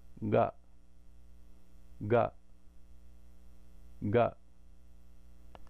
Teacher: In the guttural position that soft sound is ga, ga, ga.